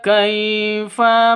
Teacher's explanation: Nah, di sini bacaan harus di cara bacanya dilentur baca lemas ya. Lemas lentur lemas karena bacaan sifat lin ya. Ini sifat lin namanya.